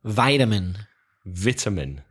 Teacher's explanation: Stressing the syllable and changing the pronunciation from it to I.